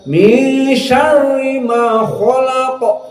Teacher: terasa syarri rohnya tarqiq, khalaqa dalam keadaan tafkhim